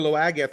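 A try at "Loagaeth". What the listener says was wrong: Loga. That's just what that's one of the few those obscure words the angels did tell D how to pronounce, or for some reason the AETH, the eighth at the end of it, is silent.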